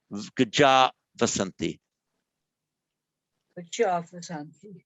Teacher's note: Where, however, we have the long ah, followed by vasanti, all that happens is the visarga drops off.